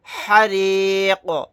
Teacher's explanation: قاف کو ساکن بنا کر پڑھیں گے آیت کرنے کی صورت میں، اور یہاں پر قلقلہ بھی کریں گے